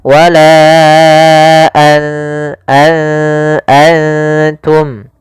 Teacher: ketika bertemu ta, nunnya disamarkan ke huruf ta, an langsung kepada makhraj daripada makhraj huruf ta. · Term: ikhfa